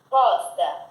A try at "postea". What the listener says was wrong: Não, postea. EA se pronuncia EA. É a E que se pronuncia E.